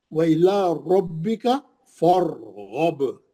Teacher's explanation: فا پہ زبر ہے، را موٹی ہو گئی